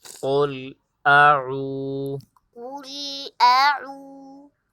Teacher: تو واو مدہ کو ایک الف کی مقدار کھینچ کر پڑھیں گے